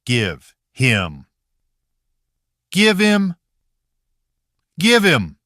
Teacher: in natural speech, the huh often weakens or disappears, and the phrase connects much faster